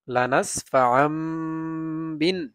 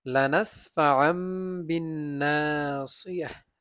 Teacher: যখন তানবিন বা নুন সাকিনের পরে বা আসে তখন এরকম মিম দ্বারা পরিবর্তন করে পড়তে হয়। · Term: ইকলাব